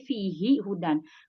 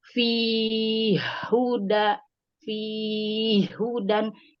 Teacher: Kalau Abu Amr tidak bisa tahqiq, jadi dianya mengidghamkan, meleburkan huruf ha.